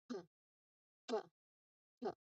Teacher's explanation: So you place your hand in front of your mouth and you should feel a strong puff of air here. Your throat must not vibrate. It is an unvoiced sound or voiceless sound.